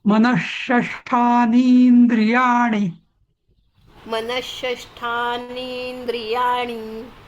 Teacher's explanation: नाही, बघा, जो नी आहे ना, तो दीर्घ म्हणायचा.